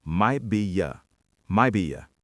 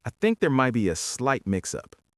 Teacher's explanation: we do not hit the T in might. We completely drop it. We blend the words together so it sounds like, might be ya, might be ya.